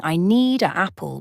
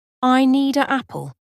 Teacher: the D sound in need connects smoothly with the vowel a in apple creating a natural flow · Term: linking sounds